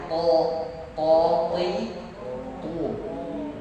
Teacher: To, bukan cuma sekedar to itu terlalu polos, mengurangi salah satu sifat hurufnya yang namanya istilah yang agak bergema, kedengarannya tebal